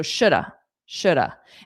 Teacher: And notice the L is silent. This has nothing to do with reductions, it's just how the sound is pronounced.